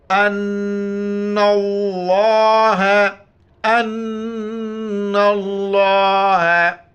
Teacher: لفظ اللہ موٹا کر کے پڑھیں گے ، اور نون کے اوپر شد ہے، یہاں پر ہونا کریں